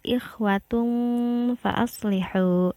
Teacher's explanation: tanwin dhammah bertemu dengan huruf fa. Nah, cara membacanya adalah didengungkan dan ditahan 3 harokat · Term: ikhfa